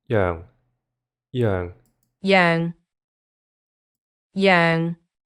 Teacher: hopefully you could hear the falling tone. And the falling tone is represented by the s.